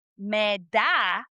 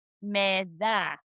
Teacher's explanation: change your D, like a hard D in English, I want you to sound like the th sound that we have in English